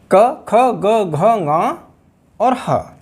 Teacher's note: कंठ में क वर्ग के सारे वर्ण और ह कंठ से उच्चारित होते हैं।